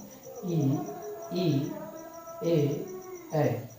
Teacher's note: तो अग्र भाग से जो हमारे स्वर का उच्चारण होता है वो स्वर है आपका इ ए। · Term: अग्र स्वर, अग्रस्वर